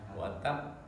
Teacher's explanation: Nah, dia ditahan sebentar karena ada tasdid ya. Di akhir ayat ada tasdid, dia waqaf, tapi meskipun waqaf dia harus ditahan dulu. Tabbat yada abi lahabin wa tab.